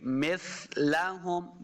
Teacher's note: سا پہ نرمی کے ساتھ پڑھیں گے، سا پہ سیٹی کی آواز نہیں آنی چاہیے، مس یہ نہیں کریں گے، مثلہم بالکل نرمی کے ساتھ، لمبا بالکل نہیں کرنا، نہ ہی کھینچ کے پڑھنا ہے۔